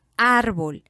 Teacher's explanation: en la palabra árbol la mayor fuerza de voz está en la primera sílaba la sílaba ar y ésta está tildada tiene acento ortográfico esta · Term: sílaba tónica